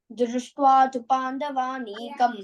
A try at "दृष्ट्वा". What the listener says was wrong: why Mahaprana issue? Not Drishtva. Drishtva, the Alpa Prana.